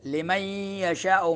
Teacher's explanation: ناک میں آواز بھی لے کے جانی ہے غنہ کے ساتھ